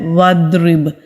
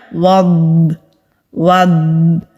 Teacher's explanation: एंड में ये हल्की सी गूंजने की आवाज भी आती है